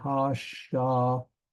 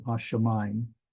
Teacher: This is a diphthong where this patak and yod and hirik and the mem at the end, those become one sound